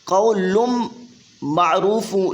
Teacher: یہ ادغام ہوگا غنہ کے ساتھ، تنوین کے بعد حروف یرملون آگے آ رہا ہے